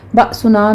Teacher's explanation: بأسنا میں با پر جھٹکا ہوگا